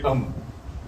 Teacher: میم دونوں ہونٹوں کے ملنے سے نکل رہا